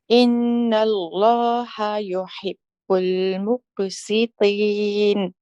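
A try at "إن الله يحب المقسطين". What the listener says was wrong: You just lost the qaf a little bit there, Auntie, and the in can be held a little bit longer.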